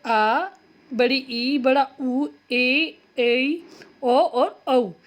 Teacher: जिन स्वरों के उच्चारण में ह्रस्व से लगभग दुगना समय लगता है उन्हें हम बोलते हैं दीर्घ स्वर। दीर्घ स्वर 7 होते हैं, जैसे आ, बड़ी ई, बड़ा ऊ, ए, ओ और औ।